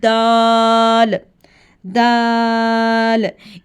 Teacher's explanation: हमने ज़ुबान की नोक को ऊपर दांतों की जड़ के साथ लगाना है। टिप ऑफ द टंग से अदा करेंगे, यानी कि ज़ुबान के ऊपर वाले दांतों की जो जड़ होती है, इससे गम जो लाइन बनी होती है, जड़ जिसको लाइन यानी कि दांतों के साथ होती है, वहाँ पे हमने ज़ुबान की नोक को लगाना है।